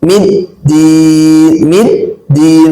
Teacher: middin bertasydid tasdid itu harus ditahan dulu